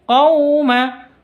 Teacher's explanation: Qaw sifat lin lentur tidak boleh disentak.